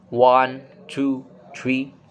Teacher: And then for the third tone is the level tone. And the pitch is stay flat and no rise or no fall.